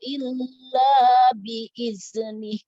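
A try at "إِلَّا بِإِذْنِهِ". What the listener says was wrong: Nah, jangan dipantulkan dalnya. Illa biiznih. Oke, ujung lidahnya ya. Ditekan. Biiznih.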